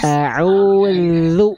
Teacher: Ujung lidahnya disentuhkan dengan ujung gigi sari atas, lalu dialirkan suaranya. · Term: huruf zal